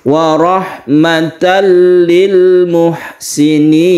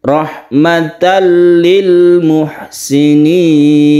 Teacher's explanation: Sama-sama idgham, yaitu masuk ke huruf berikutnya. Tanwin kita masukkan ke huruf lam sehingga timbullah tasydid lam. Tapi bila gunnah artinya dengan tidak berdengung, tidak dipanjangkan, cuma tasydid biasa saja. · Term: idgham bila gunnah